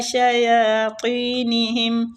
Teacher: شین باریک حروف ہے، سیٹی والا